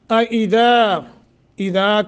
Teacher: اذا کے آگے الف ہے، 1 سیکنڈ مد کریں گے۔